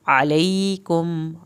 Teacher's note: अलैकुम आइन को हल्क से पढ़ना है